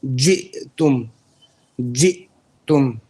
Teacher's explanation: So Hamza, the breath stops. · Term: jahr